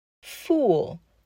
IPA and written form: fuːl (FOOL)